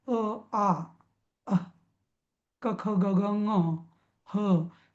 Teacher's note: कंठातनं अ, आ, अह, क, ख, ग, घ, ङ, ह हे सगळे शब्द कंठातनं बाहेर येतात. म्हणून याला कंठवर्ण म्हणतात.